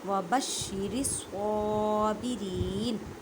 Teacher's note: صاد کو ادا کرتے وقت خیال رکھیں کہ سین کی آواز نہ آئے کیونکہ یہ حروف مستعلیہ یعنی موٹے حروف میں سے ہے